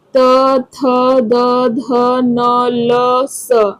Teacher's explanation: जब हम इसको बोलते हैं तो हमारे जीभ जो है दांत को स्पर्श करती है, इसके लिए इसका उच्चारण स्थान दंत हो जाता है।